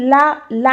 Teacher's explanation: जब हम ला बोलते हैं तो जो हमारी जीभ है, जीभ की जो नोक होती है वो हमारी ऊपर टच करती है तालू को, और साइड से हमारी हवाएं निकलती हैं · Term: पार्श्विक व्यंजन